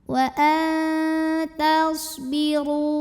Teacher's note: Huruf shad punya sifat yang tidak memiliki lawan yang dinamakan dengan shafir, jadi ada suara berdesis.